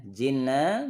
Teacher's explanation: nun tasydid, tahan dulu, 3 ketukan